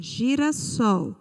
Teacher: a sílaba tônica na palavra girassol foi a sílaba sol observe que a sílaba sol ela é a última sílaba da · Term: oxítona